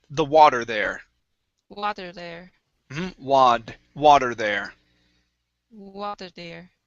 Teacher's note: Okay, now that's going to be a very common word where we don't say the T sound. Okay, like a normal T, but we switch it to a flap T.